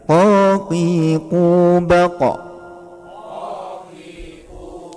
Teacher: suaranya memantul terus suaranya tebal karena istilla